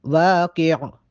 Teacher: قوف کو موٹا پڑھیں گے اور آخر میں عین کی آواز واضح ہو۔